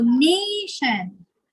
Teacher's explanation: So the stress is on the first syllable.